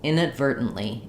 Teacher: Americans tend to use unreleased T here, and they just say the ver and the n. So we're making our sound short.